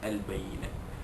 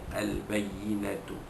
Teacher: ta bulat yang di hujung ayat atau hujung ayat apabila diwakafkan bertukar menjadi ha. Jadi kita baca al-bayyinah, asalnya al-bayyinatu.